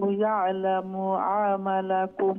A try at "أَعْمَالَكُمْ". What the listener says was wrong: আমা মিমর বাদে একটু সময় দেখা আমা মিমর বাদে আলিফ আছে আমালাকুম এ খালিফ লম্বা হইব